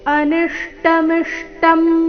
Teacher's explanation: ಅನಿಷ್ಟ ನಿ ಮೇಲೆ ಆಘಾತ ಮುಂದೆ ಮಿಷ್ಟಂ ಮಿ ಮೇಲೆ ಆಘಾತ